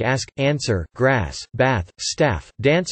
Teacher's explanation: Words like ask, answer, grass, bath, staff, dance are pronounced with the short a of trap, not with the broad a of father heard in Southern England